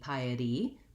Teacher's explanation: the sound pie i'll write it with a d piety because this t is a flap it's between two vowel sounds and often times in american english we make those into more of a light d sound flap t piety piety um thinking of it as the word